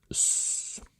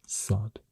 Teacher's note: It's the emphatic version of S. So you say S, but you also do a pharyngalization with your throat. Constrict your throat.